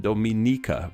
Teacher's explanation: while Dominicans from Dominica, the ni syllable is stressed, Dominica and Dominica respectively.